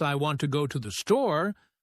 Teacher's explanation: the words want, go, and store are stressed because they carry the main meaning